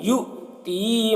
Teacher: یہ حمزہ واو کی شکل میں ہے اور اس کے اوپر جزم ہے تو حمزہ کو جھٹکا لگا کر پڑھتے ہیں